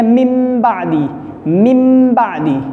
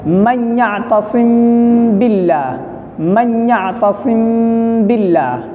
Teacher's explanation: ٹھیک ہے، میم ساکن کے بعد اگر با آ جائے گا تو وہاں پہ اخفا ہوگا، یعنی غنہ کے ساتھ اخفا بھی ہوگا، غنہ بھی ہوگا اور ناک میں آواز چھپا کر 1 الف کی مقدار غنہ کے ساتھ اخفا بھی ہوگا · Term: اخفاء شفوی